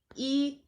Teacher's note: ई जो है वो अग्र स्वर है, अवृत्ताकार है और संवृत स्वर है।